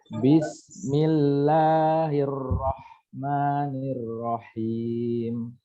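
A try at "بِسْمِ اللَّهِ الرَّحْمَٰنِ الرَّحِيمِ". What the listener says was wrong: Aliran di huruf ro, Pak. Maaf, pengucapan huruf ro jangan terlalu ini sifat takrirnya ya. Jadi Bismillahirrahmanirrahim. Jangan Bismillahirrahmanirrahim. Tapi pertengahan, Pak. Bismillahirrahmanirrahim.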